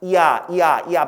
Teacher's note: 야가 어떻게 만든다? 이에서 아로 끝나잖아. 이야 빨리 해봐. 그럼 야 돼요. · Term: 이중모음